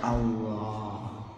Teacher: Hamzanya dihilangkan untuk memudahkan untuk pengucapannya. Lalu huruf lam yang pertama diidghamkan atau dimasukkan ke dalam lam yang kedua, sehingga menjadi satu lam yang ditasydid. Lalu lam yang kedua dibaca tebal sehingga dibaca Allah.